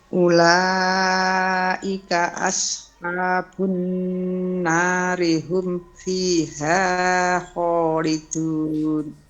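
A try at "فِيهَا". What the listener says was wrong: Fiha jangan terlalu panjang.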